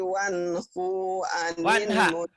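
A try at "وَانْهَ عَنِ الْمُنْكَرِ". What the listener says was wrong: Iya, bukan wanhu, wanha.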